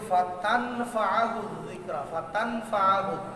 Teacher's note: এখন ইখফা হওয়ার কারণে ফাতান নুনকে তার মাখরাজ থেকে পড়া যাবে না, নুনকে শোনায়া পড়া যাবে না, পরের হরফের মাখরাজে চলে যাবে।